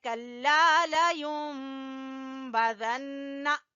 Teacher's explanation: کلا لینبذن، یہ اقلاب ہے، نون کی جگہ پہ ہم میم کی آواز کو نکالیں گے